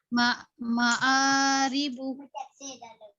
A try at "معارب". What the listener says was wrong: نہیں عین نہیں مت نکالے. معارب آ پڑھنا ہے صرف.